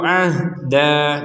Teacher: kalau berhenti ada hukum menjadi dua harakat kalau dilanjutkan menjadi hukum fathatainnya dimasukkan ke huruf nun disertai dengungan